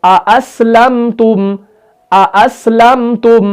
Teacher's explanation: जैसे हमने पहले हमजा की आवाज निकाली, उसी तरीके से बाद वाले की भी निकालनी है, यानी दोनों हमजा कतई को हमने यहां पर तहकीक के साथ पढ़ना है, खूब वाज़ेह करके पढ़ना है, खूब जाहिर करके पढ़ना है।